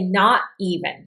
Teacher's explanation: If I say not even, and notice I don't pronounce this T very loudly. I make it more of a glottal stop.